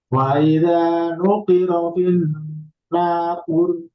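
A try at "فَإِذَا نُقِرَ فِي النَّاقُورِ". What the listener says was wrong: Kurnya kurang. Finnakur. Panjang. Nakur. Kunya kurang panjang. Kur.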